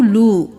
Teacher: لو واو مدہ ہے، ایک الف کے برابر کھینچیں، لام پیش واو لو۔